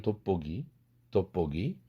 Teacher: 한국말에서도 돋보기를 돋보기, 돋보기 이렇게 드 사운드가 브 사운드로 바뀌었지 않습니까?